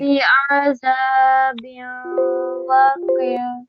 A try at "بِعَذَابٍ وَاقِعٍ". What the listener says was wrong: No, you're not making a wow sound properly. Round your lips. Bi'adhabin biu.